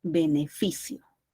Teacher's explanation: llevan la mayor fuerza de voz en la penúltima sílaba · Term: palabras graves